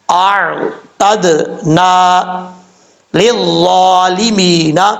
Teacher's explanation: دال ساکن ہے، تو جب یہ ساکن ہو اس میں قلقلہ ہوتا ہے